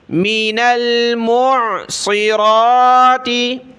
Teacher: را کو پر پڑھیں موٹا پڑھیں کیونکہ کھڑا زبر ہے۔